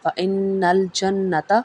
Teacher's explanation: نون مشدد اور میم مشدد پہ غنہ ادا ہوگا